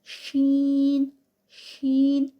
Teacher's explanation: शीन ऊपर वाली जो हमारी जुबान का दरमियान वाला हिस्सा है एक आगे नोक है और एक पीछे जो है वह हलक की साइड पर हिस्सा है और दरमियान वाली जो हमारी जुबान है वो ऊपर लगेगी